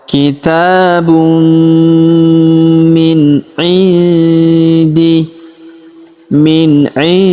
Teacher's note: Kitabun kitabum minih. Kemudian huruf nun sukun bertemu huruf di maka nun sukunnya melebur ke huruf di. Kita baca dengung dan samar. Dengungnya kita tahan dua sampai harakat.